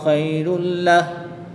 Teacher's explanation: تنوین کے بعد لام حرف معلوم میں سے ہے تو یہاں پر ادغام بلا غنہ ہوگا، بغیر غنہ کے ادغام کریں گے۔